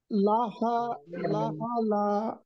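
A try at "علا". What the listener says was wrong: না, এটা আইন, এটা আইন।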